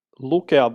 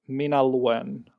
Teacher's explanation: Lukea has a consonant gradation of singular K in the stronger form, stronger grade, and then when we go to the weaker grade, we drop the K altogether